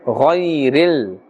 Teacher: Alright, now Ghain, look at the Ghairi. Ghain is part of the Huruf Musta'aliyah, Therefore, we are pronouncing it with a fuller mouth. Ghayril. We are not pulling here because ya sakin has a fatha before it, and therefore this is ya leen.